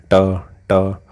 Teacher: जीव अपने आप ऊपर मुड़ के जा रही होगी, तालु के ऊपर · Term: मूर्धन्य